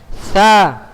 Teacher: Letak huruf tha itu berada di punggung ujung lidah pada posisi menempel di ujung dua gigi seri atas.